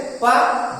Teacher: दोनों ओष्ठ जो है आपस में छू रहे हैं, तभी हम पा कह पा रहे हैं